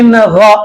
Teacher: نون ساکن کے بعد آپ کو یہاں پر غین آ رہا ہے، حرف حلقی کے حروف میں سے، اظہار کے حروف میں سے غین آ رہا ہے تو یہاں پر نون کی آواز کو ظاہر کریں گے